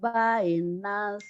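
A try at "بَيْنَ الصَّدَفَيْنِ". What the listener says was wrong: Bainas. Bainas. Kurang nyamber. Bainas sadafaini.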